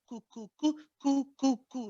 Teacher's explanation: Very clear, touching the hard palate as well. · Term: kaf